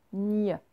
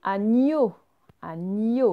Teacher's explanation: quand je dis NIE, ma langue, elle ne vient pas se coller contre mes dents, elle va plus loin dans ma bouche, plus par derrière. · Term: le son nie